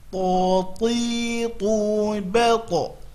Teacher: Huruf to, kesalahan biasanya pada huruf to ini keluar nafas ketika membunyikannya. To salah, dia bukan huruf hamas, maka kita berusaha penyebutannya tidak mengeluarkan hamas pada penyebutan huruf to.